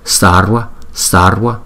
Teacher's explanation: Thì chữ V đứng sau một phụ âm thì chúng ta có thể đọc là W